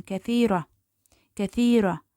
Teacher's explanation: thira orada ikinci hecaya düşür